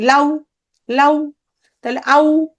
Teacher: আ, এটা পূর্ণ স্বরধ্বনি, আর উ এটা হচ্ছে অর্ধ স্বরধ্বনি। এ দুটো মিলে কি হয়ে গেল? দ্বিস্বর ধ্বনি।